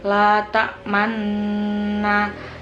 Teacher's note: terdapat hukum bacaan ismam karena mencampurkan domah pada sukun dengan memoncongkan bibir atau mengangkat dua bibir